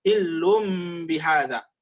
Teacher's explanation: Kata Syekh, ketika nun tanwin tadi ya datang setelahnya, setelah nun tanwin tadi huruf ba, maka pada saat itu berubah dari nun tanwin menjadi mim dalam pengucapan. Ya, bukan nun tanwin diucapkan, bukan hillun bihadza, tapi hillum bihadza menjadi mim.